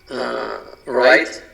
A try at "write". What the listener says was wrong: No hay ese right, sino right, como la R de frente. Olvídate la W. Right. Así, como montar bicicleta, right? Igualito suena.